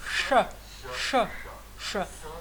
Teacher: vous mettez la langue au niveau du palais mou, qui touche le palais mou, et vous prononcez ça.